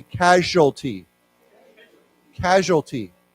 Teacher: Now remember, the S has a sh sound to it.